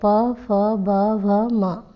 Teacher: प वर्ग आपके होठों से बोले जाते हैं, इसलिए इनको ओष्ठ्य कहते हैं।